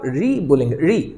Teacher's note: और जब आप री बोलेंगे, री, तो ऋषि के लिए जैसे आप री बोलते हैं दोस्तों वैसे ही वो जीभ कहां चली जाती है, लुढ़क कर थोड़ा सा रोल होकर पीछे की ओर। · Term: मूर्धा